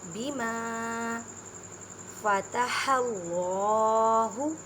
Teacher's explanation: اللہ کے لفظ سے پہلے زبر ہے، اس میں جلالہ ہے، یہ اس وجہ سے اس اللہ کی لفظ کی لام کو موٹا پڑھیں گے۔